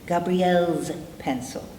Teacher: L vibrates, L, Z. We're preserving the vibration, therefore, Gabrielle's pencil.